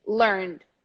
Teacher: The word learned, the verb learned, the last syllable is pronounced N straight to the D, learned. But the adjective is an exception.